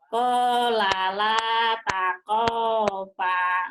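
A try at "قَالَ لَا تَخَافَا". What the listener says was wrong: Takho bukan takopa, takhofa. Ibu orang Jawanya masih medok nih. Takopa, takopa, takhofa. Takho, takho, hoer, hoer, hoer. Qala la takhofa.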